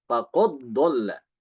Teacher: Jadi qalqalanya hilang. langsung masuk ke dalam dot.